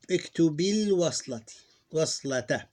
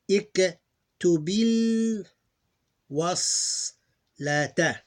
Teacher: You're skipping the Hamza.